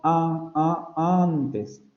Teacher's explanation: Decimos antes, con la a nasalizada, no ni siquiera es pues antes, hasta cuesta trabajo tratar de pronunciarlo de manera oral, porque la articulación de la nasal va a influir en la articulación de la vocal, entonces esa vocal se nasaliza. Y vemos cómo la transcripción estrecha de la palabra antes está representando otros detalles que no representa la transcripción fonémica de la palabra antes.